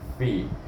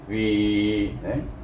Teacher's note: Ingat makhraj fa itu gigi kacip atas pergi kepada perut bibir bawah.